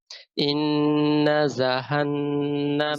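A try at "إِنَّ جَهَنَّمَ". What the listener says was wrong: জা ভাই জিহ্বার আগে না জিহ্বার মাঝখানে জিব যা শক্ত করে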